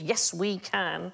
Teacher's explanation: Molossus, so that's three stressed syllables